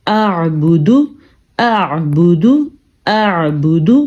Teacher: دونوں آوازیں آ رہی ہیں، حمزہ کی بھی اور عین کی بھی